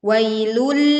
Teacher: kita leburkan dhamma tanwin pada huruf lam tanpa disertai dengung. Dan pastikan sebagian suara tertahan di ujung lidah.